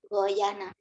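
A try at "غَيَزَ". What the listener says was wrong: Goyaza ini za. Z. Bukan goyana. Goyaza. Z yang kamu susah. Goyaza.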